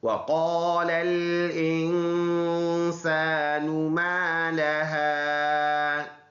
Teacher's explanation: واو دونوں ہونٹوں کے گول ہونے سے ادا ہوتا ہے